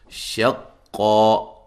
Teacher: قاف کو موٹا ادا کریں گے، شین کو قاف سے زور سے ملائیں گے